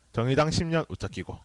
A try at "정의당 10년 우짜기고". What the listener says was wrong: 정의당 10년 우짜기고. 발음 자 조심해야 돼요. 정의당 10년 우짜기고.